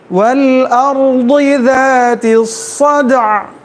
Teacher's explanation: را ساکن ہے، را سے پہلے کیا ہے؟ فتحہ ہے، تو را کو کیا کریں گے؟ موٹا پڑھیں گے